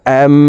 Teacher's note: গুন্নাটি তিন সেকেন্ড পরিমাণ ধরে রাখবো দেখুন হামজা মিম জবর আম এখানে হরকতের বামে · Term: গুন্নাহ